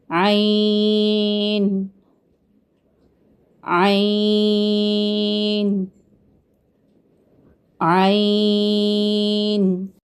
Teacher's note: जुबान की जड़ को आप हलक की तरफ मजबूती से दबाते हुए बारीक और रगड़ खाती आवाज में अदा करते हैं। और इसके दुरुस्त आवाज की पहचान आपको पता है क्या है कि अदायगी के वक्त आप गले में कुछ दबाव सा महसूस करते हैं। · जी बिल्कुल हलक से आवाज आ रही है